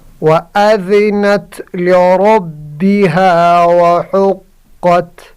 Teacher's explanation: را کو موٹا کرنا، را پر زبر ہے، اگر را پر زبر یا پیش ہو تو را پر ہوگی۔